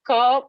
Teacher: Ka is plosive and velar.